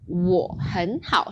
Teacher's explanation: So if we give the full third tone, 我很好, then Chinese would take forever. But usually, when we say it in a phrase, we have that half third tone.